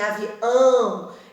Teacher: avião, em que nós temos, por exemplo, uma região de nasalização muito forte. É só fazer o pronunciamento e colocar a mão no nariz que vocês vão sentir a vibração.